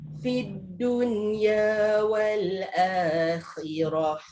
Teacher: Kha ni mungkin tertukar dengan ha kalau kita tak sebut betul-betul dia punya sebutan yang ada efek keluar kahak tu.